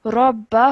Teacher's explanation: this raw would be a thick and heavy raw because it has a Fatah